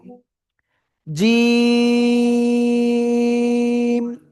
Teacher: জিহ্বার মধ্যখান তার বরাবর উপরের তালুর সাথে লাগাবো। লাগিয়ে এক দুই তিন আলিফ টেনে পড়ব।